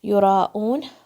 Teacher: یراؤن، یا کے اوپر ضمہ ہے، را کو بھاری پڑھنا ہے اور پھر یہاں پر 4 to 5 کاؤنٹ کا مد ہے، آپ 4 کاؤنٹ پہ کنٹرول رکھیں